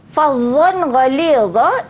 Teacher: izhar halki, dibaca dengan jelas, tidak dengung. Tak boleh fadhon, kalau ada salah, ya, kena izhar jelas.